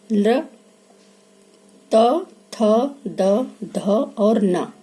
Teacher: बोल के देखिए, ल, त, थ, द, ध और न। ये वर्ण जब हम बोलते हैं तो हमारे जीभ का आगे का हिस्सा जो है वो दांतों से टकराता है, इसलिए ये वर्ण जो है दंत कहलाते हैं।